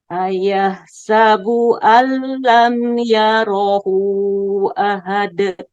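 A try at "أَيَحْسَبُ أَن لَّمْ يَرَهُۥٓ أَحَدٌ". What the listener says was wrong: Kurang panjang sedikit lagi Bu yang yarahunya.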